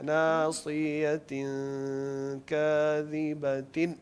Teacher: نون کو بالکل واضح کرنا ہے اور بالکل نہیں کھینچنا. جیسے چھوٹا سا نون بولنا ہے.